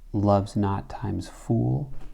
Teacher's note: And so in this case, love's not is strong, weak, but here we have what we would call a spondy, but it's not because the iambic pentameter takes over. This times is demoted while fool maintains its full stress. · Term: trochaic inversion